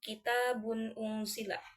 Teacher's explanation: yaitu terdapat tanwin menghadapi hamzah. Sebagaimana yang telah didefinisikan bahwa izhar itu harus dibaca secara jelas